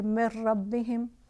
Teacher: فل ادغام جو ہے وہ را اور لام ہے، جیسے مر ربہم تو بالکل ہی نون کو جو ہے وہ نہیں پڑھا جائے گا، ڈائریکٹ نیکسٹ لیٹر پہ مرج کر لیں گے